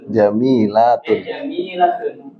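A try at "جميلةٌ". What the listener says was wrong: Lanya panjang.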